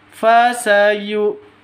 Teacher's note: panjang dua ketukan karena ada ya mati diawali dengan kas kasro